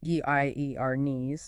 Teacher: The v is soft almost between a b and v.